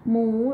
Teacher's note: หมู with the rising tone